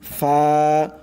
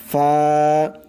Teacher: নিচের ঠোঁটের যে পেট আছে মধ্যখান, ঠোঁটের মধ্যখান, উপরের দুই দাঁতের মাথা সেই মধ্যখানে লাগবে। ফা, নরম করে ফা।